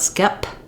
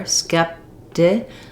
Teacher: It's a little bit blurry what sound we use there, skeptic, because it comes after that stopped P. I don't really say or release that P sound. It's not skep. · It's not skep. I don't have a puff of air, skepti. I just release it into the T.